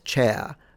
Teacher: It's non-rhotic, it's dropping R's,